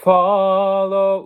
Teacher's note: Now the first consonant is a fricative consonant. No voice is involved, just air.